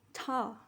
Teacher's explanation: the sound is pronounced with an extra puff of air that is called aspiration